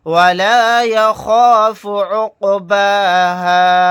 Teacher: ولا يخاف عقباها واو زبر وا لام الف زبر لا ولا یا زبر یا خا الف زبر خا یا خا فا پیش فو یا خاف عین قاف پیش عق با کھڑا زبر با عقبا ہا الف زبر ہا عقباها ولا يخاف عقباها. یہاں پر قاف ساکن ہے تو یہاں پر ہم قلقلہ کر کے پڑھیں گے.